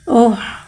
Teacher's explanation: हा को एक अलिफ यानी 2 हरकत के बराबर खींच के पढ़ेंगे। हा में हवा को ज़ाहिर करके पढ़ेंगे। हा के बाद साकिन है, साकिन को पहले वाले हुर्फ से मिला के पढ़ेंगे।